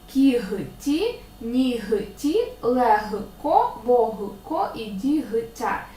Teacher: є лише звісно п'ять винятків кігті нігті легко вогко і дігтяро ці всі слова у вимові матимуть х але на письмі звісно вони матимуть г